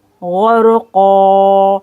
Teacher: یہاں پر الف مدہ 2 سیکنڈ کھینچا جائے گا